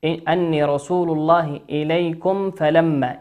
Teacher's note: النون هنا في كلمة أني هي نون مشددة عليها حرف شدة، عليها علامة الشدة، وتغن بمقدار حركتين · الميم هنا في كلمة إليكم ساكنة أتى بعدها حرف الفاء، والفاء من حروف الإظهار.